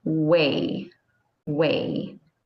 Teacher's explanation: with the w sound the lips are rounded but they don't touch and the tongue is resting don't let your lips touch just round it way way okay